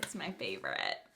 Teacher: I did the vocal fry at the end just to be extra millennial.